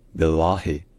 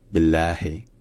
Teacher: quand c'est à côté d'un i, les deux L ne sont pas emphatiques, donc ce n'est pas billahi, c'est billahi.